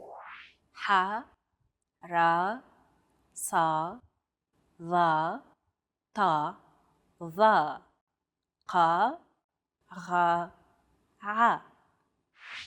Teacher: categorized as such because they're pronounced deep within the throat ah they sound like the d h s t and Q sounds respectively except much more tense because the throat is constricted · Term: emphatic consonants